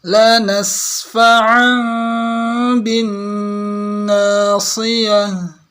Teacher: Ini sin dengan fa nggak putus ya. Ada sifat rikhwah nyambung ke fa.